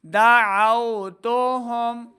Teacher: ہا کو حلق کے نچلے والے حصے سے ادا کرنا ہے، میم ساکن کو ظاہر کرنا ہے، یعنی بغیر غنہ کے پڑھیں گے